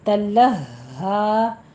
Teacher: लोह नहीं कहना, लाम को मोटा नहीं पढ़ना, लाम बारीक रखिए।